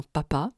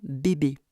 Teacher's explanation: on en arrive aux occlusives bilabiales qui peuvent être sourdes comme dans papa ou Sonor or comme dans bébé